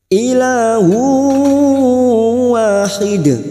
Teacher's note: tanwin bertemu wawu idgham bi gunnah siap masuk dan mendengung masuk pada huruf berikutnya yaitu huruf wawu. dan mendengung selama 2 atau 3 harokat.